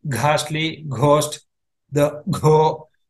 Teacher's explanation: For g, the mahaprana, you will find a h added to the normal g. It will sound like ghastly, ghost, the go, that portion will become prominent.